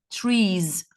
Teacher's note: e it is pronounced trees I can't say trees trees why because the previous sound is a vowel sound so after a vowel it is pronounced Ze